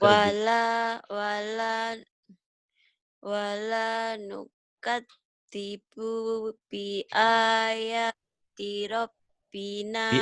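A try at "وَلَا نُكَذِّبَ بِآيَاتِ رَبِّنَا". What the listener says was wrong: bi ayatina. Nanya ketinggalan. Bi ayatina.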